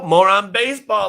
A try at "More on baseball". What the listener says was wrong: It sounded like you said moron, like moron baseball.